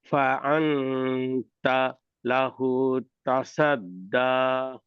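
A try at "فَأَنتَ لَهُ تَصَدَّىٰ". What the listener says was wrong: সা হবে না, সদ, স বলেন দেখি, স, তা স।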